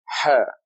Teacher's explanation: This is the letter Ha, a loud whisper.